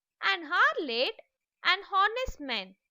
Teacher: when you pronounce them, the H is silent. The first sound of the word is the vowel sound